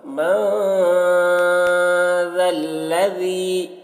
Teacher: نون ساکن کے بعد حروف اخفا میں سے ذال ہے تو یہاں پر اخفا ہوگا